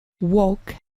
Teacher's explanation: Puedes notar en la pronunciación que la L se omite.